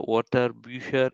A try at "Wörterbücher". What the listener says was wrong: So not water, Wörterbücher.